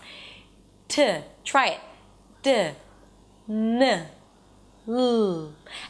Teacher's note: So the tongue goes up and touches right behind the teeth on that little bridge inside your mouth. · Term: Tip of the tongue consonants